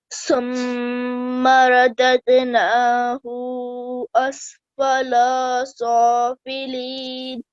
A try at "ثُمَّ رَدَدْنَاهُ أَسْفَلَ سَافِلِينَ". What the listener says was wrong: Okay, and don't prolong. That was much better. But don't prolong these two for more than 1 second, okay?